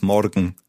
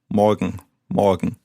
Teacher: So, as I said, I'm from the south of Germany, of Bavaria, and in Bavaria you tend to roll the R